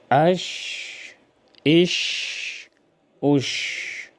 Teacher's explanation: شین کو جزم کے ساتھ یوں ادا کریں گے: حمزہ شین زبر اش، حمزہ شین زیر اش، حمزہ شین پیش اوش، اش، اش، اوش۔ آواز منہ میں پھیل جائے، صفت تفشی کی وجہ سے، اس میں صفت تفشی ہے